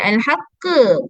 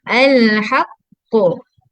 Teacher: Huruf qaf huruf yang tebal. Okey. Huruf yang tebal. Jadi bunyi lantunan suara dia pun tebal. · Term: qalqalah